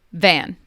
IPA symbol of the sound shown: v